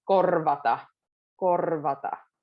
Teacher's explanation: So kind of try to blend, like there's a bridge from R to V.